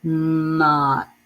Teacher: Not. In this word, the O has the ah sound, similar to the letter A. Not. And T has that T sound.